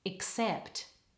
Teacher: Except. Watch your ks and pt at the end of the word. All the stress is on the second syllable.